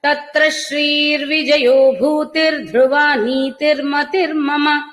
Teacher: విసర్గలన్నీ రేఫమయ్యి రేఫ సంధి ప్రకారం రకారాలుగా వినిపిస్తున్నాయి